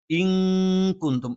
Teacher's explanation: നൂനിനെ അവ്യക്തമാക്കി ഉച്ചരിച്ചുകൊണ്ട് മണിക്കണം. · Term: ഇഖ്ഫ